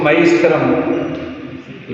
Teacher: तो इसको मयि स्थिरम लगातार ही पढ़ना है इसको, क्योंकि हमने इसके पहले ही आपको बताया था कि जो या है इसमें ह्रस्व ई है, मई नहीं है